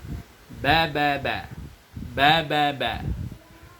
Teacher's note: Huruf ba, baris atas dibaca ba. Makharijul hurufnya dikeluarkan dari dua bibir.